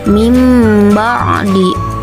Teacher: suara nun mati atau tanwin diganti dengan suara mim mati dengan merapatkan bibir dan mendengung. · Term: iklab